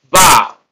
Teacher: have a a about so this prefix is unstressed a about so stress is on the second syllable